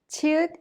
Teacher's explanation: is an aspirated sound with a burst of air, and it has the CH sound like in the English word chapel.